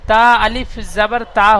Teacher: তা জাবার তা ছিল, এই তার সাথে আলিফ যুক্ত হয়েছে, সেজন্য তা আলিফ জাবার তা হয়েছে। আর তা আলিফ জাবার তা এক আলিফ টান দিয়ে পড়তে হবে। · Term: আলিফ মাদ্দা